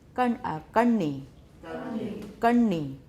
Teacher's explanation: All right, retroflex, curl your tongue.